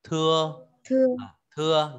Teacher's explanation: Tờ giống chữ thờ nhưng bật nhẹ hơi